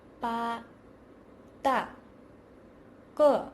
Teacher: Initials b, d, k are unaspirated.